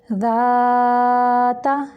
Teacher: ذات، ذال بالکل نرم طریقے سے پڑھیں گے، یعنی زبان کی نوک جب اوپر والے سامنے کے 2 دانتوں کے سرے سے لگے گی تو ذال ادا ہوتا ہے۔